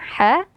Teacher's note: huruf ha yang keluar dari tengah tenggorokan